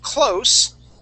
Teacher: I'm close with a voiceless S, close to the wall.